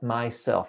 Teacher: Now, a couple of things I picked up on here is the sound S. Sometimes when you are saying S, I hear sh, sh. So for example, you were saying my shelf My instead of myself.